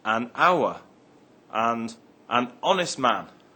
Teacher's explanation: The H in honor is silent